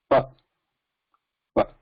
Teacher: We are using lips only to stop the air. And where the air is being stopped? At the lips only.